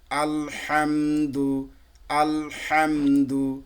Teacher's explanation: আল বলে থেমে যাবেন না, ভাগ হয়ে যাবে দুইটা কিন্তু